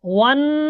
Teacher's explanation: یہ غنہ ہوگا نون پہ کیونکہ اس پر شد ہے نون پر